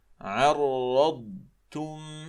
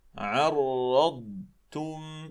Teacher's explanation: الضاد لها زمن، الضاد رخوة